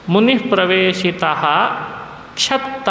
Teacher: ಮುಂದೆ ಕ್ಷಕಾರ ಇದ್ರೆ ಹಿಂದಿನ ವಿಸರ್ಗವನ್ನ ವಿಸರ್ಗವಾಗಿ ಹೇಳಬೇಕತ